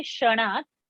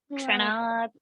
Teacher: So K-S-H sound should come ksha and not sha.